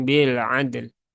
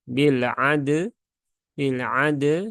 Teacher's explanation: Dal itu sifatnya syiddah sedangkan lam itu sifatnya tawasut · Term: qolqolahkan Dulu huruf dalnya, kolkolahkan dulu huruf dalnya